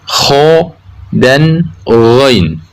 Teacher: Ujung tenggorokan keluar 2 huruf, yaitu kho dan ghain.